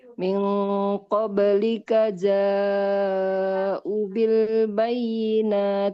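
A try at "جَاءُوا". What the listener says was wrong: Ja'u. Hamzahnya. Hamzahnya 2 harokat ibu ya. Ja'u.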